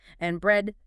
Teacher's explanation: you fall on the very last item to signal that's the end of the list. And bread.